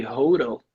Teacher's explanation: You cannot say hotel because, the T is between the two vowels, but it's in a stressed syllable. So you have to sound that T out, not a flap.